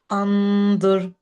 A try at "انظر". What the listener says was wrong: انظر. There needs to be a dhamma on it.